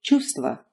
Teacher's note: you can thankfully skip the first V sound